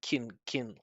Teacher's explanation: So if you're not like emphasizing can, you shouldn't pronounce the vowel. It should just be a reduction. It should just be kin like that.